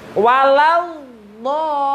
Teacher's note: Nah, dot ini panjangan dulu, panjang sekitar 3 alif atau 6 harokat